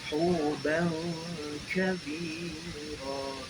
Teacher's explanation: Ikhfanya samar, terjadi karena ada tanwin menghadapi huruf kaf.